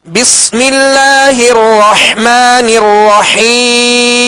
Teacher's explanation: جب اس کی حرکت پڑھیں گے تو اب 1 الف کی مقدار میں کھینچیں گے. جب وقف کریں گے تو اب سکون عارض پیدا ہو گیا، لہذا اب مد عارض ہوگی. اس کو 1 الف سے زائد اب کھینچ سکتے ہیں